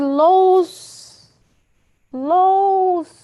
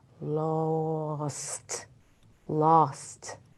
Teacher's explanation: really annunciate the last letter of the word which is T we really must hear the T sound or else it'll just be lows